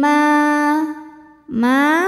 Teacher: dengan tebal fil ardim Ma Ma hukumnya adalah Mad Thobi'i doohiri sebab ada Alif yang sebelumnya berharakat fathah maka mim kita panjangkan dua harakat